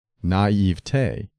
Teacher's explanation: it is acceptable to stress the middle syllable